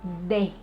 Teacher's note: half of my tongue is gonna be flat and close to the roof of my mouth, and just behind the upper teeth, the sound is gonna be produced. D.